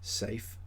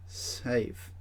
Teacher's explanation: V is pronounced with the vibration of the vocal cords